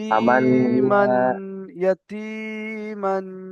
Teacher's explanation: তাই তানবিনের আওয়াজকে নাকে দিলে একালি পরিমাণ গুণনা করে পড়তে হবে।